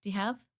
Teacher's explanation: The word you becomes reduced to the sound ya.